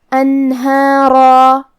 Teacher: لیکن را کو اور مد الف کو تفخیم سے مطلب بھاری آواز میں پڑھیں گے